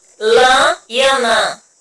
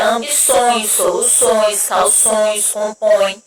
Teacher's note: Então, o tio indica uma vogal nasal, que o som sai tanto pela boca e também pelo nariz